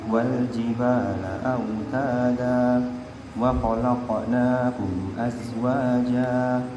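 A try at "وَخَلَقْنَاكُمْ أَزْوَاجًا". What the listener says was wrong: Qafnya tidak boleh wa khalaqna. Wa khalaqna. Enggak boleh seakan-akan ada hamzahnya. Wa khalaqnakum azwaja. Tapi wa khalaqnakum azwaja. Qaf biasa. Jadi saya jelaskan di sini terkait qalqalah.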